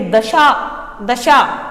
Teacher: शा आप जैसे ही बोलते हैं आपकी जीभ तालु से स्पर्श करती है